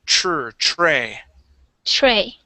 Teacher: the TR sound you want to pronounce that like a CH